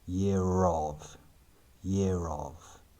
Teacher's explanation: Note the r sound in between year and of,